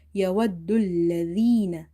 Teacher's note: zal from the tip of the tongue, and touch it with the inner edges of your top two front teeth.